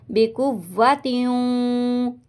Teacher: آتَيْنَاكُمْ کم، ٹھیک ہے، بِقُوَّةٍ، تیوں ہونٹوں کو بالکل گول کر دیں گے واؤں میں